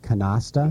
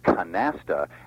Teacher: only one pronunciation is countenanced in this dictionary, and that's with a flat, more English or anglicized A, canasta